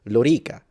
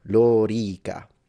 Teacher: As an Italian, I would just say Lorica. So the O would be short, or I would say Lorica, and I would make everything short.